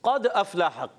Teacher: काफ को पढ़ेंगे पुर, क्योंकि काफ रुफ़े मुस्तालिया में से मोटा अदा करेंगे, और क़द दाल में होगा कलकला। · काफ का भी एक मखर है जबान की जड़ और तालू का नरम हिस्सा